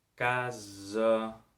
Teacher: Aquesta segona A de la paraula casa és la vocal neutra